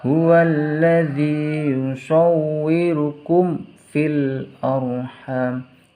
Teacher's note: di sini ada harokat mim sukun bertemu dengan huruf fa, maka harus dibaca jelas. Yusawwirukum fil arha, hanya dibaca panjang karena ada harokat fathah bertemu dengan huruf alif.